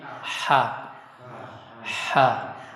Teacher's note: cukup di tengah tenggorokan ya. Jadi dia tidak boleh ditekan dari dada. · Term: huruf ha